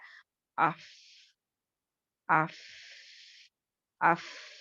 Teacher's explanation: आवाज़ क्या हो रही है? पस्त हो रही है, और फिर सांस क्या है? जारी है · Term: हम्ज़